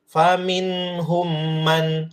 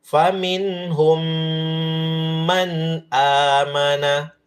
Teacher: Faminhum, mim sukun ketemu mim, dikasih lama.